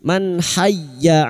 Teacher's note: Man hayya nun sukun bertemu ha, idhar halki, nun sukun dibaca jelas tanpa mendengung